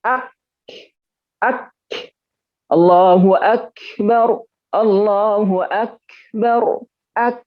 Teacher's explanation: Ya, ak dulu syiddah, baru hamas ak. Nah, lalu kemudian bagaimana ketika dia harakat?